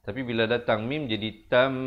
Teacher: tanwin bertemu mim. Asalnya tan, tapi bila datang mim jadi tam, 2 harakat.